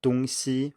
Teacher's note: I should also point out here that 东西, with the first tone on the second syllable as well, actually does mean east-west